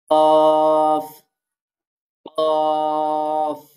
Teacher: জিহ্বার গোড়া তার বরাবর উপরে তালুর সাথে লাগিয়ে কফ উচ্চারিত হয়